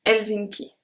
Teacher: So we don't pronounce the H.